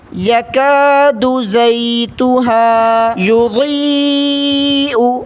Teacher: ضاد کو موٹا پڑھنا ہے، پھر یا پر مد ہے، کھینچ کر پڑھیں گے